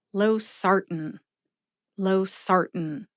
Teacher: emphasize that second syllable, SAR. See if you can hear that emphasis when I say it slowly.